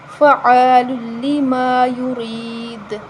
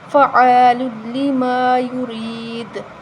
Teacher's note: زیر آ رہی ہے یا ساکن سے پہلے فعال لما یرید اگر ہم اس پر وقف کریں تو دال پر قلقلہ کریں گے